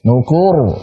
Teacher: Ra sukun sebelumnya dhammah berarti apa? Tebal. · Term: sukun biasa